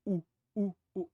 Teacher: a vogal u é feita aqui atrás u u u ou seja a diferença no ponto de articulação